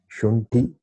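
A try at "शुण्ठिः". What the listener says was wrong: Shandam Shunti Visarga is there.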